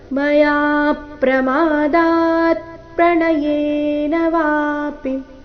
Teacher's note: ಮಯಾ ಯಾ ದೀರ್ಘ ಹೇಳಿ ಯಾ ಮೇಲೆ ಪದ್ವಾಘಾತ ಮಯಾ ಪ್ರಮಾದಾತ್ ಪ್ರಣಯೇನ ವಾಪಿ ವಾ ದೀರ್ಘ ಪೀರಸ್ವ ಬರಬೇಕು.